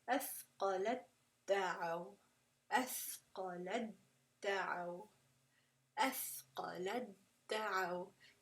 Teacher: See how it's almost like the ta is just disappearing. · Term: idgham kamil